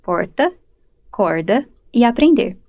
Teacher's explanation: Aqui em Rio Preto, o que predomina na fala é a pronúncia retroflexa do rótico em fim de sílaba, popularmente conhecido como R caipira